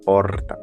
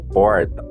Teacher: essa mesma palavra é pronunciada como porta marcada pelo TEP retroflexo, popularmente conhecido como R.